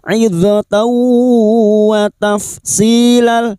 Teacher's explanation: fathah tanwin bertemu wawu idgham bi gunnah, masuk pada huruf wawu dan mendengung selama 3 harokat